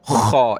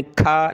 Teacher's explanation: خا ہے موٹا کر کے گلے سے نکال کر, تو خا یا زبر خی, ٹھیک ہے.